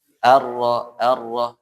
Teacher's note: Nah, kalian ingat ro tuh di benar ro ujung lidah sama langit-langit atau gusi ya, bagian atas